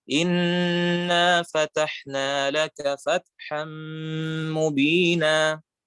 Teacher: idgham atau gunnah itu terdengar lebih panjang dibandingkan mad tabi'i